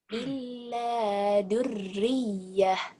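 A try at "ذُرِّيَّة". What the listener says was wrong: azalnya agak rapuh dikit ya. Illa dzurriyyah. Dzur ya.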